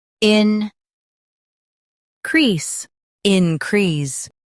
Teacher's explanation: Stress crease and keep in soft.